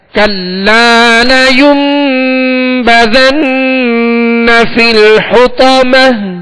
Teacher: ہم نے کلا کے لام کو کچھ کھینچا ہے ایک الف کی مقدار یعنی 2 حرکت کی مقدار میں ہم نے اس کو دراز کیا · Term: الف مدہ